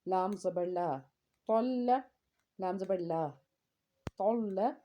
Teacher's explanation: लाम को नरमी से अदा करेंगे तशदीद के साथ। जब तशदीद का कहीं पे आपको साइन नज़र आता है, इसका मतलब है कि उस हर्फ को हमने 2 बार पढ़ना है।